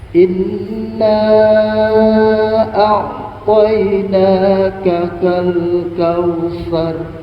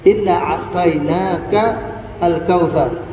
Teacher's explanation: Inna itu panjang Kenapa karena sesudahnya adalah huruf hamzah atau huruf alif yang merupakan Hamzah qata bukan Hamzah wasal